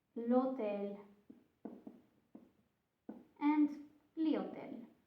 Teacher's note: in Italian you don't pronounce the H. The H is silent.